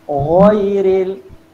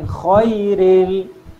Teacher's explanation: Kena ada getaran sikit. Ghairil bukan khairil. Tu kha. Ni ghairil maghdu. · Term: huruf ghain